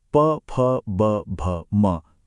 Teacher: इन्हें बनाने का तरीका तो सबसे साफ साफ दिखता है, क्योंकि इसमें हमारे दोनों होंठ एक दूसरे से मिलते हैं और फिर खुलते हैं।